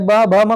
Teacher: आप सभी लोग चाहे पा बोल के प्रयास कीजिए, चाहे फा चाहे बा भा मा कोई भी वर्ण लीजिए, तो आपका दोनों होंठ एक दूसरे को स्पर्श करेगा। जब तक स्पर्श नहीं करेगा तब तक आप नहीं बोल पाएंगे। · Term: ओष्ठ